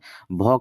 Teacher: भ का उच्चारण स्थान है ओष्ठ। ओष्ठ यानी कि ओठ।